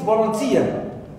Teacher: Tia is the last syllable in this word, and it is stressed.